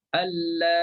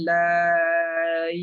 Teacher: Hamzah tu dah hilang, dah dibuangkan. Ya tu kita matikan dia.